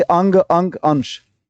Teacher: नाक से अधिक सांस निकलती है उसको अनुस्वार बोलते हैं, मुख से कम